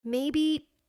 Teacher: Uncertainty maybe. Voice goes up and down slowly.